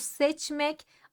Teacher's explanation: Çünkü Ç sert bir ses G yumuşak bir ses sert olan daha baskındır baskın olan zayıf olanı yani yumuşak olanı kendisine benzetecek kendisi gibi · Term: ünsüz benzeşmesi